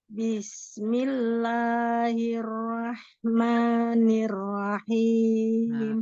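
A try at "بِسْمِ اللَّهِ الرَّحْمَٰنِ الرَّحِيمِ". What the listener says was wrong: Pertama, Bismillahi. Hi-nya harus lebih hembus lagi. Ya, agak kurang hi-nya tuh nggak hembus tadi. Bismillahirrahmanirrahim. Jadi hi-nya tuh nggak hembus jatuhnya, nggak hi gitu ya.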